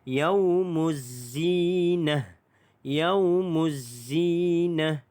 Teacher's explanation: Dia terus masuk yaumuzzi, yaumuzzi, dan zi itu dibaca dengan panjang 2 harakat mad asli huruf ya, dan nah ta marbutah ini bila kita waqaf dia berubah menjadi huruf ha. Huruf ha simple.